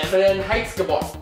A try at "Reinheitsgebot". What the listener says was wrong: Just different intonation, but.